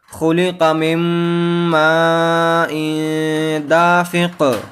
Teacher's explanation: آخر میں جو قاف ہے وہ ساکن ہو جائے گی، تو دافق قلقلہ کے ساتھ یہاں پر ٹھہریں گے